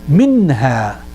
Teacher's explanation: put the pressure so that the air comes out from the nose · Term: ghunnah